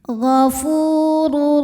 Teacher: Maka tanwinnya masuk ke ro, ghafurur tanpa dengungan. Jadi cukup ditekan. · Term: idgham bila gunnah